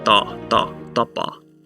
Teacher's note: at the beginning of the word, you can see that it's unaspirated